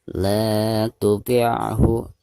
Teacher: la dipanjangkan 2 harakat karena dihukumi mad tabi'i. Ada harakat fathah la lalu berhadapan dengan alif sukun.